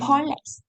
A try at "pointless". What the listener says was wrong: Mình yếu cái chữ P đầu tiên khi mà ráp hai câu á. Bạn đọc là chữ boy này, bạn đọc chữ này là pointless, giống như bạn đọc là chữ boy á, boyless ấy. Bạn đọc giống như từ này này. Bạn đọc giống như từ này này thân này.